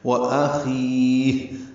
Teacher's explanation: وأخی میں حمزہ اقصی حلق سے ادا کریں گے، خا ادنی حلق سے